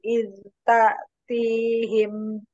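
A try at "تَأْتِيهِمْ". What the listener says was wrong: Kuatkan lagi Hamzah sukunnya.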